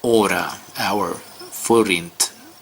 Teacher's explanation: The R, the consonant R, is produced by rolling the tip of the tongue.